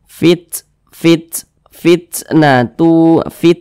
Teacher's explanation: Di sini ada huruf ta, kemudian huruf ta ini dia sukun. Nah, huruf ta sukun ketika kita membunyikannya atau mengucapkannya, maka ada udara yang mengalir ketika kita mengucapkannya. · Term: sifat hamas